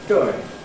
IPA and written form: dʊɪŋ (doing)